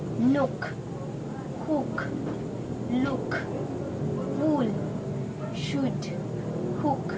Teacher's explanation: In this vowel, the lips are puckered or rounded back as for a kiss, but the tongue is relaxed in pronouncing U as in wood. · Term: U sound